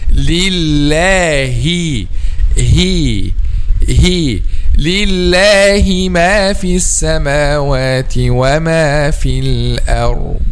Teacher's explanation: Okay, so we mean here the deepest part of the throat. We use the deepest part of the throat to pronounce letter ha. · the point of articulation of letter ha, the throat, particularly the back or the deepest part of the throat